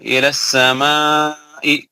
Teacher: यहाँ पे हरूफ मद्दा के बाद हमजा आ रहा है मद मुत्तसिल होगा 4 हरकत के बराबर पढ़ा जाएगा